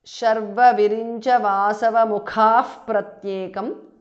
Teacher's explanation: visarga changes to upadhmaniya